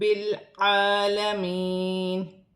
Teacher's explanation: عین حروف حلقی میں سے ہے، حلق سے ادا کیا جائے گا اور کھڑی زبر ہے، ایک الف کی مقدار کھینچ کر پڑھا جائے گا۔